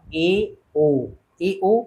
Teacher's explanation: अर्धसमृत होता है इसके उच्चारण में समृत से थोड़ा अधिक मुख खुलता है